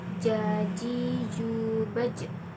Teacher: Huruf ini dilafalkan dengan menyentuhkan tengah lidah ke daerah langit-langit.